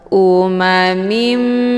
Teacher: dengan mim yang bertasdid ini dinamakan dengan Idgham bihunah cara bacanya harakat tanwin kisrah dimasukkan ataupun dileburkan ke dalam huruf mim dengan cara ditekan kemudian ditahan lebih kurang dua kali ketukan Um mimi ya hukum bacaan Idgham Bi ghunah dibacanya sambil didengungkan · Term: idgham bi ghunnah